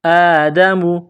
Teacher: الف کے اوپر کڑا زبر ہے، اس کو ایک الف کے برابر کھینچ کر پڑھیں گے۔